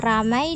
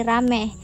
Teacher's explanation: Perubahan ini terjadi pada bunyi vokal rangkap ai ke vokal tunggal e. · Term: monoftongisasi